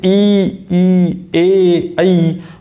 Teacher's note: आगे की ओर जोर पड़ेगा जीभ के अग्र भाग पर, तो ये अग्र वर्ण हो गए हैं।